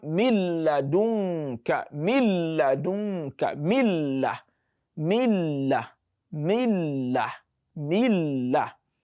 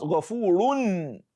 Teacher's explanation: as if we have deleted the nun completely, as if the nun does not exist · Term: idgham kamil